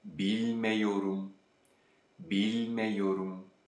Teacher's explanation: because of the yor suffix, the a sound at the end of the negation suffix changes to E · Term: vowel mutation